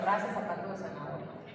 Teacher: En mi opinión, una variación muy característica es el ceseo. Nosotros tendemos a pronunciar el fonema como S en palabras como raza, zapato o zanahoria